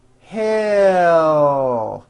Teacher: To produce an L sound at the end of a word, keep in mind that the sound of the L comes from the movement of the tongue rising. It does not come from the placement of the tongue, but from the actual movement.